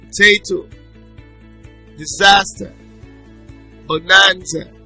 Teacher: the stress falls on the penultimate syllable